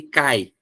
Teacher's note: O cai junto, ó. Ai, um único sopro. Cair, separa, tá?